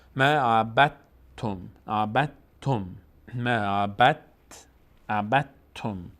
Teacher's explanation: دال کلا تلفظ نمیشه، تبدیل شده به حرف ما بعدش ت و ت تشدید گرفت. به همین خاطر ب رو ما مستقیم میچسبونیم به ت، اصلا دال رو تلفظ نمی کنیم، میگیم ما عبدتم، عبدتم، ما عبدتم.